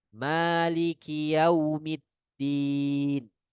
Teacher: Ya, ada bunyi pecah. Ada bunyi pecah di kaf.